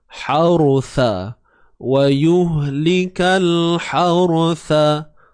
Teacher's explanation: Ra yang mati sebelumnya baris atas, maka ra ini perlu ditebalkan sebutannya.